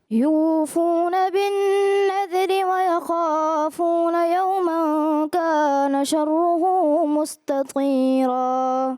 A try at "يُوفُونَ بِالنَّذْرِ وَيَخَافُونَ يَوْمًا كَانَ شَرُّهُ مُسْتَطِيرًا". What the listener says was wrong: یوفون، یو آپ نے تھوڑا سا حرف مدہ کو زیادہ کیا، ویسے اچھا پڑھا.